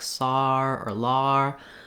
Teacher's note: for new yorkers they may put a little r sound in that like sar or lar